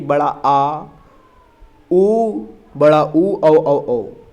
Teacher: जीभ की सहायता से पीछे से बोले जाने वाले स्वर हैं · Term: पश्च स्वर